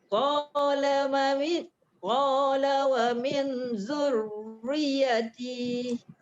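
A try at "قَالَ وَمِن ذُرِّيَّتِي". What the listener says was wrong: Dia punya hanjut dia tu dia tak boleh laju, dia tak boleh zurriyati, tak boleh. Zurriyati. Riyati. Cuma dekat min tadi tu ikhfa tu tercicir pula ikhfa dia.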